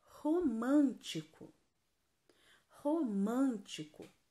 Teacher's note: romântico é a antepenúltima sílaba é a mais forte então ela é uma palavra proparoxítona se ela é proparoxítona ela tem que ser acentuada então romântico